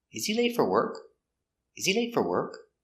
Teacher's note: And we stress important words. Late is the important word. It's an adjective.